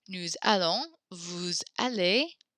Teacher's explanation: You hear the liaison there. We now pronounce the S at the end of these two words because the next word begins with a vowel.